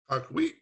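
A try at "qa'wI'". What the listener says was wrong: Karwit. The first time you said it like this with the Y, right? What I hear is this. I hear an English G creeping in there.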